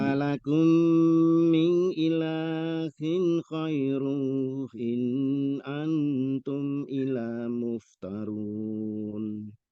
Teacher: ketika min ilahin ghairuhu, nah itu diwasolkan, dibaca panjang 4 harokat ya. Tidak sekedar min ilahin ghairuhu in ya. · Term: Mat silah